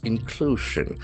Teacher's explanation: inclusion, Inclusion, there are three syllables. Inclusion, the accent falls on the second syllable.